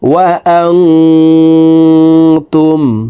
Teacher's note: নুন সাকিনকে নাকের ভিতরে লুকাইয়া গুন্নার সহিত পড়ব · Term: ইকফা গুন্না